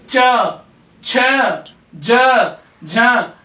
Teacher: ऐसे ही च वर्ग के सारे तालु से बोलेंगे। तालु यानी कि जब आप इन्हें बोलेंगे तो आपकी जीभ ऊपर कहीं लगेगी।